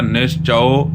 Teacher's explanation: ਹੈ ਕਹੁ ਨਾਨਕ ਨਿਸਚਉ ਚਚੇ ਨੂੰ ਜਿਹੜਾ ਹੈ ਕਨੌੜਾ ਲੱਗਿਆ ਹੋਇਆ ਕਨੌੜੀ ਦੀ ਜੋ ਆਵਾਜ਼ ਹੈ ਉਹ ਅਊ ਕਰਕੇ ਹੋਇਆ ਕਰਦੀ ਹੈ